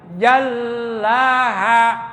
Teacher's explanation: lamnya ada tas, jadi harus ditekan dan ditahan dua ketukan.